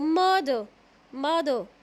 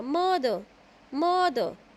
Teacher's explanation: मैंने कहाँ पे स्ट्रेस नहीं दिया, ई आर पर स्ट्रेस नहीं दिया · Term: अनस्ट्रेस सिलेबल